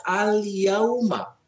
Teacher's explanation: ada huruf alif lam, dibacanya dengan jelas, maka ini disebut dengan alif lam komariah